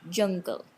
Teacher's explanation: Then J, affricate, voiced. It is not aspirated.